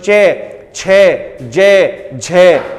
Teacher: चे का उच्चारण स्थान तालव्य होगा